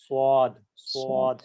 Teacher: সাদ উচ্চারণে صاد মুখটা একটু গোল হতে ধরবে, পুরোপুরি গোল হবে না صاد ওয়াওয়ের মতো, সাদ অল্প একটু গোল صاد হবে এবং মোটা উচ্চারণ হবে।